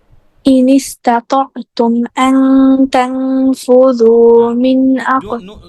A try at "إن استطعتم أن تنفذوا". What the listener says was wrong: Don't make it izhar. Izhar means clear. So don't, noon will be not clear. Ikfa, right? Ta is ikfa letter. So gunna ikfa. Anta. And the Usmani script, do look at that. There is noon has nothing. No sukun, no fatha, no kasra.